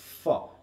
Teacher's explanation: যেটা হচ্ছে ফ, মানে তুমি তখন দুইটা ঠোঁট একসাথে না, তখন তুমি কি করছো? উপরের দাঁত দিয়ে নিচের ঠোঁটটাকে ঠেলে দিচ্ছ, দিয়ে বাতাসটাকে দাঁতের ভিতর দিয়ে বের করছো। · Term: ল্যাভিওডেন্টাল